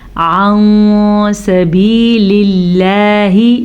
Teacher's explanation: نون ساکن کو چھپے ہوئے غننے کے ساتھ پڑھتے ہیں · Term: اخفا